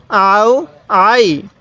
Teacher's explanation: জবর এরপরে ইয়া সাকিন থাকলে কিভাবে পড়তে হয় তাহলে আও আই আইনটা একটু চাপ দিয়ে পড়বেন কারণ অনেকেই এই আইনটাকে আপনারা হামজা উচ্চারণ করে থাকেন আইনটা যদি গলার মধ্যে একটু চাপ দিয়ে পড়লে আইনটা সহি উচ্চারণ